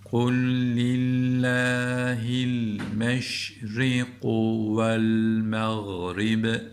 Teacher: Galgale yaparak duruyoruz. Çünkü durunca cezim geldiği için B harfi galgale harflerinden.